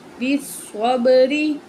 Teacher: تو پڑھتے ہیں با زیر سواد بس، سواد زبر با صب، بس صب، غازری، بس صبری۔ سواد کو موٹا کر کے پڑھیں گے